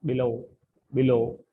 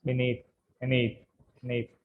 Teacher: have stress on the second syllable